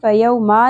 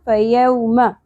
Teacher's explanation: یو، یہاں پہ حرف لین آ گیا ہمارے پاس، واو ساکن سے پہلے زبر. فیوم، میم کے اوپر زبر ہے، سنگل زبر ہے، زیادہ نہیں کھینچیں گے. فیوما نہیں پڑھنا.